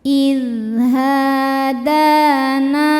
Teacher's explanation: Da hukumnya mad thobi'i muqaddar karena dalnya berharakat fathah panjang. Cara bacanya huruf dal ini kita panjangkan dua harakat saja.